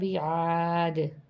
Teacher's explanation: جب ہم وقف کرتے ہیں تو آواز دوبارہ پلٹ کے دال کی آواز نکلے گی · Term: حروف قلقلہ